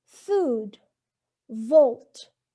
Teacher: So, notice that f in food and v in volt, the air is forced through the upper teeth and lower lip, since they are labiodental